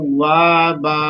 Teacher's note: دو زبر کی آواز وقف کی صورت میں وہ الف کے ساتھ الف مدہ کے ساتھ آتی ہے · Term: مد عوض